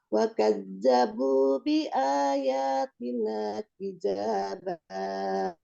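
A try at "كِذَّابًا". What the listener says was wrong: Jadi kizza tasdid kizzaba.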